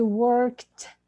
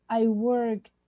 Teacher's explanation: It's a D, but we pronounce it a T because it's K before it. Okay, so I worked.